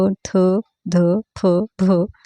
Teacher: हे सर्व महाप्राण आहेत कारण त्याच्यामध्ये उच्चार करताना पहा ह चा उच्चार सुद्धा होतो म्हणून यांना महाप्राण असे म्हणतात म्हणून आपले उत्तर काय राहील पर्याय